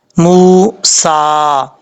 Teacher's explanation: میم کے بعد واو مدہ ہے، ایک الف کی مقدار لمبا کر کے پڑھا جائے گا